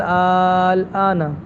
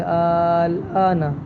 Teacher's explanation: مد لازم ہے، اور اس کی ابھی ہم نے مقدار جو ہے 3 الف ہے ، اور اس کو مد مخفف بھی کہا جاتا ہے۔ سمجھ